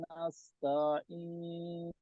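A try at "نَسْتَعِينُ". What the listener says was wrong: নাস এটা সিন, সোয়াদের উচ্চারণ হয়ে যাচ্ছে, সিন, নাস্তাইন। নাস না, নাস। সোয়াদ উচ্চারণ, নাস উচ্চারণ করলে সোয়াদ উচ্চারণ হয়ে যাচ্ছে। নাস নাস্তাইন। সিন, নাস্তাইন।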